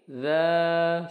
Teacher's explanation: Za panjang 2 harokat, ukurannya adalah seperti tangan kita menggenggam kemudian melepaskannya.